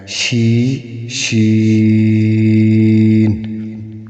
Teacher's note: بعض حضرات پڑھتے ہیں شین، ناک میں آواز کو لے کے جاتے ہیں، جو کہ غلط ہے۔ جیسے آپ پڑھتے ہیں ایس ایچ ای، شی، شی، شی، آپ وہاں پہ شین نہیں پڑھتے بلکہ پڑھتے ہیں شی، شی۔